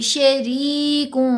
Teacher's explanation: شریکوں ایسے اسمائلی فیس سے پڑھیں گے نا، ہونٹوں کو ایسے کھینچ کے، تو را باریک ہوگی